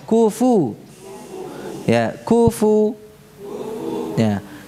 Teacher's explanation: pakai bibir bawah saja ya, agar tidak terucap seperti pu ya, bukan kupu ya, kufu ya, kufu ya.